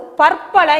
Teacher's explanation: லகர ஒற்று ரகர ஒற்றாகவும் மாறக்கூடியதை நாம் தொல்காப்பியத்திலே பார்க்க முடிகின்றது